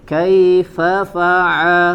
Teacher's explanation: terus dilatih huruf ain di wasatul halq, ya, di bagian tengah tenggorokan